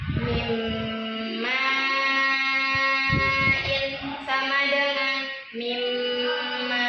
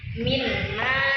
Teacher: Kalau jelas kayak gini minma itu salah. Kita bacanya harus mendengung karena idgam itu memasukkan. Jadi mendengung dulu baru langsung masuk ke huruf setelahnya. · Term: idgham diguna